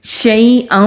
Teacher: شین کی آواز منہ میں پھیلتی ہوئی ہوگی۔ حمزہ کے اوپر تنوین ہے، 2 زبر 2 زیر اور 2 پیش کو تنوین کہتے ہیں۔